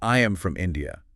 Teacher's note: If you say, I am from India, each word gets stressed. It sounds a bit heavy, like you're reading a list out loud.